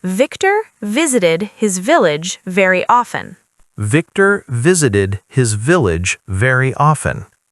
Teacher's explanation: Feel your bottom lip touching your top teeth each time. Yeah, it's very active compared to w.